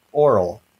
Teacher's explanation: you might not feel that same puff of air when you say the word oral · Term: oral vowel